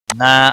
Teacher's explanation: نا الف مدہ ہے ایک الف کے برابر کھینچ کر پڑھیں گے